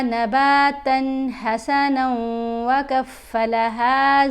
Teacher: یہاں بھی نون کا واو سے ادغام ہو رہا ہے نا، آوازیں مل رہی ہیں، نون کو واو سے ملائیں گے تو غنہ کرتے ہوئے ملائیں گے